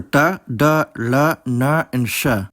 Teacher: the retroflex consonants, the ones where the tongue is curled back and the underside touches the roof of the mouth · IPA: [ʈ] [ɖ] [ɭ] [ɳ] and [ʂ]